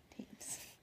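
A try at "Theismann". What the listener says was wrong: You're very close. There's no M, though. No M.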